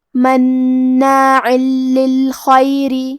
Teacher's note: لام حروف الادغام بغیر غنہ میں سے ہے تو ہم یہ تنوین کو لام میں ملا کے بغیر غنہ سے لیکن تشدید کے ساتھ یہ حکم کو ادا کریں گے